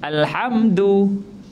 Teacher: Dal menyentuh pangkal gigi, bukan menyentuh lelangit. Selalunya kita baca dal sentuh lelangit. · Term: makhraj yang betul